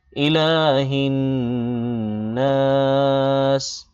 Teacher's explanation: ইলা লামে একালিপ টান হবে